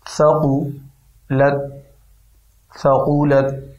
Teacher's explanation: لام کو تا سے ملا کے اس کی آواز کو مزید پیدا ہونے سے بچائیں، کیونکہ تا حروف قلقلہ میں نہیں ہے